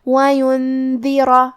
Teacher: دال حروف الاخفاء میں سے ہے اور اخفاء کا معنی ہے چھپا دینا، تو ہم نون ساکن کو چھپاتے ہوئے اور غنہ کے ساتھ یہ حکم کو ادا کریں گے · دال کی ادائیگی زبان کے سر اور اوپر والے دانتوں کے اندرونی کناروں سے ہے